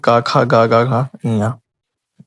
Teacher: ध्वनि कहाँ से निकलेगी, गले से, कंठ से निकलेगी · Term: का वर्ग